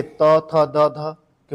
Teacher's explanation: दंत में आपके त, थ, द, ध भाई यह दंत वाले हैं आपके